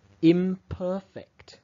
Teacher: The morpheme in, meaning not, is realized as im in the environment where it comes before a bilabial sound, such as b or p.